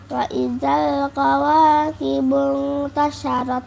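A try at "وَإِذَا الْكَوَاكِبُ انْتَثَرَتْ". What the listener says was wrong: Bukan sya itu. Sa. Wa idzal kawakibu tasarat.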